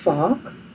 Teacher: the V is pronounced as an F in Afrikaans